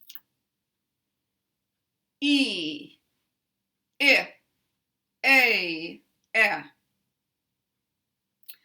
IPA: i, ɪ, eɪ, ε